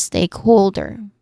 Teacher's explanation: starting with steak which is our primary stress still on the first syllable. Steak.